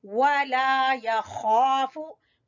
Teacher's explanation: खा हलक का सबसे ऊपर वाला हिस्सा, उस वहां से खा अदा होगा, या खाफु और पुर भी पढ़ा जाएगा।